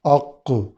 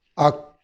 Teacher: جو دو نقطے والا کاف ہے وہ موٹا بھی ہے، اس میں قلقلہ بھی ہے، اور کش والا جو کاف ہے، کتاب والا، یہ باریک ہے اور قلقلہ نہیں ہے